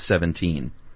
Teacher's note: That's 2 unstressed, followed by a stressed. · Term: anapest